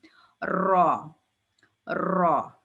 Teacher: را کی آواز بھی پر ہوتی ہے یعنی موٹی ہوتی ہے